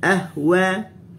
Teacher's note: Sebab huruf ha rakhawa dengan hamsnya tak panjang, dia pendek.